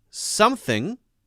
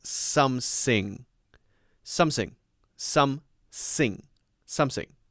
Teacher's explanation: for example in china the two common th issues are saying the unvoiced th as s